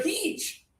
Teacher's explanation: High tongue, just a little air